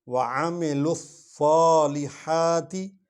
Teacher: سواد کو موٹا پڑھیں گے، لف کیونکہ سواد پر شد ہے تو ادھر لے آئیں گے، الف لام کو نہیں پڑھیں گے، سیدھا سواد پر جائیں گے۔